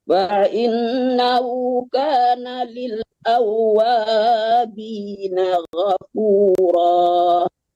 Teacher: Wanya panjang, kan ada alif tuh di depannya.